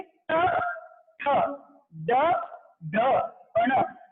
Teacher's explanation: जब भी ट वर्ग के वर्णों का उच्चारण करो, आपकी जो जीभ है ऊपर की तरफ फोल्ड हो जाती है, मुड़ जाती है, घूम जाती है, और जीभ की इस अवस्था को मूर्धा बोला जाता है। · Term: मूर्धन्य वर्ण